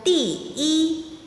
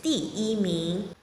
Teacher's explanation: E also keeps its original tone, the first tone, when it's put in ordinal numbers